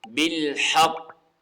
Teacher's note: تو قلقلہ ہوگا یعنی تھوڑی سی آواز ہلے گی، جنبش ہوگی